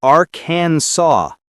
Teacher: it looks like it should rhyme with Kansas, but it doesn't. It's Arkansas. The final S is silent.